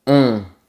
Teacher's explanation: La bonne réponse est long, qui est le contraire de court. Le mot long rime avec bonbon. C'est la même voyelle nasale très fermée.